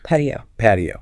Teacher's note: That T is often flapped.